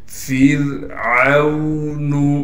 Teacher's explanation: فرعون، فا کو را سے ملائیں گے اس لیے کہ را ساکن ہے، اور را ساکن سے پہلے زیر ہونے کی وجہ سے را کو باریک پڑھیں گے۔ عین کو واو سے ملا دیں گے اس لیے کہ واو ساکن ہے۔